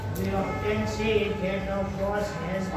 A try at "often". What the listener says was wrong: Often कौन बोलना सिखाता है आपको? Often. T is silent.